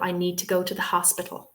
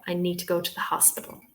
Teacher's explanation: Hos is like jumping out a mile.